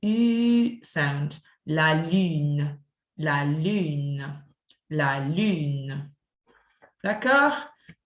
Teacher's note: the u sound is like you are saying e but your lips are pursed so if i go from ee and i curse my lips